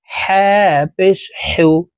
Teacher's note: হা হরফ হালুকের মধ্যখান থেকে উচ্চারণ করব